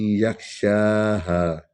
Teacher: ہا کو لمبا کرنا ہے کیونکہ الف پر مد ہے